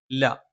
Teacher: നാവിന്റെ അറ്റം മേലെ മുൻപല്ലിന്റെ മോണയിലാണ്